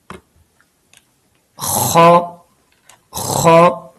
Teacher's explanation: یہ حلق کے نیچے حصے سے ادا ہوتا ہے، یعنی جہاں حلق شروع ہوتا ہے، گلے کا سب سے اندرونی حصہ، وہاں سے یہ ادا ہوتا ہے